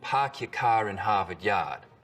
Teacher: we call this the start vowel in boston it's usually pretty fronted